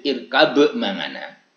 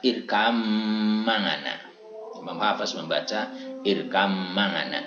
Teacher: Ya, jadi ba mati yang bertemu atau diikuti oleh mim berharokat yang terdapat dalam Al-Quran surat Hud ayat 42. Imam Hafiz membaca idgham dengan memasukkan ba ke huruf mim ya.